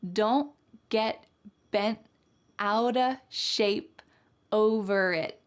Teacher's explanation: All of these T's are what we call stopped T's. So it's not wrong to say don't get bent, but when you hear fast American English speakers, you're gonna hear them stop the T in their mouth.